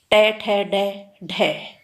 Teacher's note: जो मूर्धन्य ध्वनि है मित्रों, वो है ट, ठ, ड, ढ